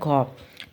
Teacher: অনেক বেশি নিঃশ্বাস নিয়ে উচ্চারিত হয় এবং হ যুক্ত হয় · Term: মহাপ্রাণ ধ্বনি